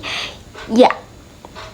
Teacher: ketika Tengah lidah bertemu dengan langit-langit atas terjadilah bunyi ya